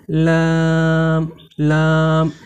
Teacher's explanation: তারপরে জিহ্বার 5 নম্বর মাখরাজ হলো যে জিহ্বার আগার কিনারা থেকে লাম হরফকে পড়তে হয়, অর্থাৎ জিহ্বার আগার কিনারা তার বরাবর উপরের তালুর সঙ্গে লাগিয়ে লামকে পড়তে হয়